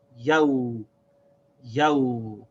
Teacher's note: And the ya has a fatha, so it's pronounced ya. But then after the ya is a waw that has sakin, so we have to connect the sound of the waw to this ya with its vowel. So we say yaw.